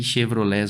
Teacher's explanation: a posição da sílaba tônica é a última, ela é uma oxítona